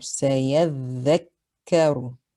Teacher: You hear the for the dhal with shadda, and you hear the k, right? The kaf has shadda, so make sure you hold it to show that there are 2.